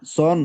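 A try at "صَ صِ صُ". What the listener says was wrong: একটু মোটা হবে, সিনের তুলনায় সিন আর সদ কাছাকাছি কিন্তু উচ্চারণ আমরা করি, কিন্তু এই সিন একটু হচ্ছে পাতলা আর সদ একটু মোটা। সন, সিন, সুন একটু মোটা করে করতে হবে, সন, সিন, সুন, জি।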